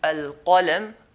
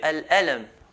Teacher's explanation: They change the qaf into an alif. Instead of saying al-qalam, they will say al-alam.